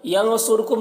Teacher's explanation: नून में इख्फ़ा हो रहा है, साद और रा दोनों को पुर पढ़ेंगे। कुम यहाँ पर मीम साकिन के बाद मीम है तो यहाँ पर इदगाम शफ़वी हो रहा है, इसे गुन्ना के साथ पढ़ेंगे।